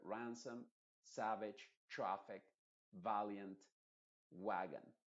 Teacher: Que el énfasis de esta palabra está en la primera vocal. Y en esa vocal está precisamente la vocal A modificada, que es la A. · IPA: /æ/